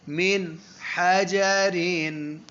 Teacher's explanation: اب زبان کی نوک ٹکا کے لگے گی اور غنہ بالکل نہیں ہوگا. تھوڑی سی ناک میں آواز جائے گی جو غنہ نہیں ہوتا ہے.